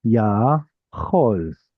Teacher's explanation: Here we've got a long vowel and a long vowel. Kamatz, ah, and cholam, o.